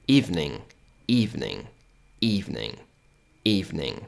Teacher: Quando você tiver esse N aqui, ó, com essa perninha aqui, ó, dobradinha para trás, significa que o som do I é um som mais de I mesmo, não vai ser um som de E, por mais que seja aquele símbolo do E. O som vai ser mais parecido com um I. E você vai ter um som um pouco mais nasal, certo?